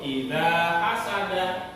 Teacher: Dibaca 2 harokat atau 2 ketukan, dibaca panjang. Tidak boleh idza hasada, harus idza hasad. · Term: bacaan matobi